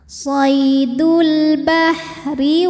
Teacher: ra dibunyikan dengan tipis, lidah rileks, pangkal lidah tidak perlu naik ya, ringan